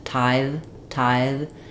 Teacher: we're going to have a continuing sound where my tongue is between my teeth